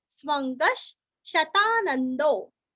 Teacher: स्व के ऊपर आघात, वांग्मय का ग और नीचे पूरा ग है और विसर्ग का आधा श